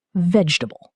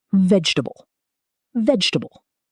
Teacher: Not VEJ-ta-ble. The middle syllable almost disappears.